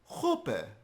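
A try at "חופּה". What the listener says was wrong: Ausgezeichnet.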